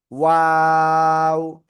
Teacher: এই অক্ষরের নাম হলো ওয়াও। দুই ঠোঁট শুরুতে গোল হবে, মাঝখানের দিকে দুই দিকে প্রসারিত হবে, শেষের দিকে এসে আবারও এক জায়গায় হবে।